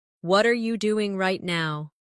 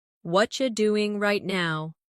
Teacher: In natural speech, what are you becomes whatcha.